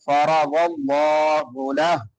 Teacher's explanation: لفظ اللہ بھی پر پڑا جائے گا کیونکہ لفظ اللہ سے پہلے زبر ہے